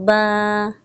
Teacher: با کو ایک الف کے برابر کھینچیں گے، با۔ اس کو بے یا بے نہیں پڑھنا، ٹھیک ہے۔